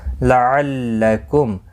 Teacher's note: میم ساکن کے بعد تا اظہار شفوی ہوگا